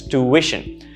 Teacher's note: The second syllable has the stress.